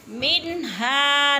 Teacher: نون کے اوپر اظہار ہو رہا ہے، کیونکہ نون ساکن کے بعد آگے ہا حروف حلقی میں سے ہے، تو اس لیے ادھر اظہار ہو رہا ہے، غنہ بالکل نہیں کرنا، جلدی جلدی اس کو ادا کرنا ہے۔